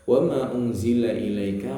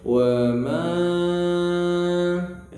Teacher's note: Wa ma unzila ilaika, manya panjang 4 harokat ya. Wa ma 4 kali ketukan.